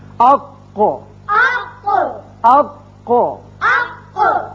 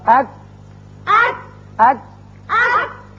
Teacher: کاف ذرا ہٹ کر نیچے کی طرف سے نکلتا ہے اور باریک ہوتا ہے